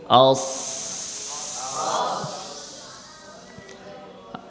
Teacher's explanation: রখাওয়ার সিফাত পাওয়া যাচ্ছে, অর্থাৎ এখানে আওয়াজ জারি থাকবে।